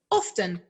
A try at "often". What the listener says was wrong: Often. Notice there, he pronounces the T. In American English, we just say often. So the T for us, not pronounced, silent.